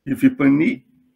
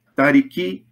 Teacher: Enquanto eu tenho as palavras isoladas, eu tenho um acento para cada palavra, e quando eu faço a derivação, a palavra composta, o acento ele se desloca, né, para a última sílaba, tornando a última sílaba pesada.